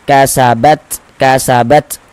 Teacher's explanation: Jadi ada nafas yang mengalir ketika kita mengucapkannya. Karena huruf ta juga salah satu huruf yang memiliki sifat hames.